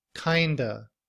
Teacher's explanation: in reduced form, we don't pronounce the V at the end of of. We just use the schwa sound. Uh, kind remains the same, but we blend the sounds together to produce kind of.